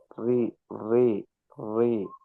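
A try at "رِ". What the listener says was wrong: நாவினுடைய மேல் பரப்பு தான் படணும். எங்க படணும்? பல்லுக்கு பின்னால இருக்கிற துண்டுல படணும். ஆனா நீங்க உச்சரிக்கும் நேரத்துல படுற இடம் இந்த இடம் தான் நீங்க உச்சரிக்கல படுது. அதான் பிரச்சனை. நாவினுடைய ஓர பகுதி பட வேண்டியது எது? அதல்ல, இது மேல் பரப்பு. ரி ரி ரீ அல்ல, ரீனா பின்னுக்கு போகுது. பல்லுக்கு பக்கத்துல ரி ரி. ரி அந்த சவுண்ட் வரணும்.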